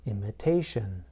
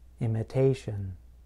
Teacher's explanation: in the noun imitation, I place stress in the middle of the word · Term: word stress